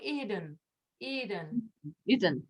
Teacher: Remember a little bit of a schwa for that second one, then it is not in the stressed syllable.